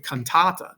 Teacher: The first A is a short A, right? But it's long by position because it's followed by two consonants, the N and the T. So it's not naturally long, but its position within the word is making it a long syllable.